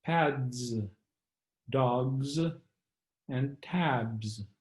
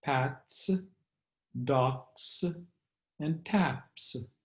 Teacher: so in the case of the pronunciation of the plural s voiced follows voiced and voiceless follows voiceless